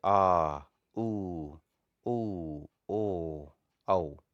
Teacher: पश्च स्वर, जिसमें जीभ का पश्च भाग काम करता है, जैसे आ, ऊ, ओ, औ।